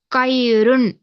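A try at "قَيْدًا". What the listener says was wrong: లేదు, లేదు. చివరి అక్షరంలో తప్పు చేస్తున్నారు మీరు. కైదన్. దాల్ ఫతతేన్ దన్. దాల్ ఫతతేన్ దన్.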